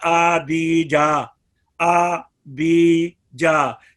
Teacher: तो ये इन मद्दे असली की मिकदार जो है वो 1 अलिफ है।